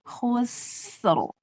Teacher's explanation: Nah, saya pernah bilang kalau ro disukunkan, perhatikan yang sukun sebelum ro sifatnya. Sin itu tipis dan dia rokhowah. Tipiskan sambil ngalir. Khusr. Nah, ro-nya baru tebal.